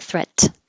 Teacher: your tongue goes to the T position threat and then you hold it there don't release any air